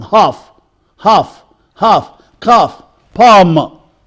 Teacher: So you make the long, half, half, half, calf, palm, cot, pot, you are. So this vowel is back, it is long.